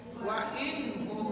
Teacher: Jelas, nun mati jumpa dengan ha, izhar halki.